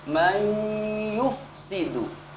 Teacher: Dengungannya harus terlihat nyata, tidak menggunakan lidah saja, bukan may yufsidu tapi ada sengaunya atau ada ghunnahnya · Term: idgham bi ghunnah